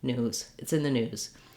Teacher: i do have a z sound but you can get away with doing just a little short light sound